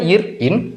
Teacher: நாவினுடைய நுனிப்பகுதி மேல்வாயை மிகவும் பொருந்துவதால் இந்த இர் இன் இது பிறக்குது